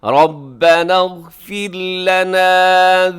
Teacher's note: إِلَّا أَن قَالُوا رَبَّنَا اغْفِرْ لَنَا، رب را موٹا ہے کیونکہ را کے اوپر زبر ہے تو را پر پڑی جائے گی، اور اس کے بعد جو آگے را ہے وہ را ساکن ہے، اس سے پہلے فا کے نیچے زیر ہے تو را باریک ہوگی